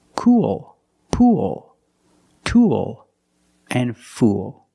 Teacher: It's the long oo sound plus the dark L.